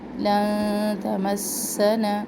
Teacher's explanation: لن تمسنا سین میں سختی اور سیٹی، نون زبر کو ہم نون شدت سے ملائیں گے.